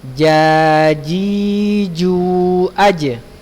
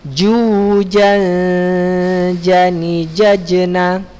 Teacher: Ja itu ada di lidah bagian tengah pada posisi langit-langit bagian atas